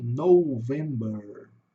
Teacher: a sílaba tônica é assim, começa fraca, sobe para o vem e desce no ber, né? November, tá?